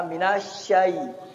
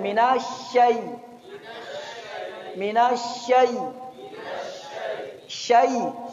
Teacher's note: Kemudian sifatnya, sifatnya sya, nafasnya ngalir, sya, suaranya ngalir. Kemudian sifat yang paling terkenal adalah tafasyi. Apa itu tafasyi? Nafasnya menyembur di mulut. Di dalam mulut, ya, minasyai.